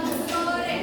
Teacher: O dalam sore termasuk vokal sedang dan belakang